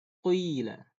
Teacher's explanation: Tapi kalau di Warsh, ya-nya dibaca condong ke waw. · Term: Ya yang condong ke waw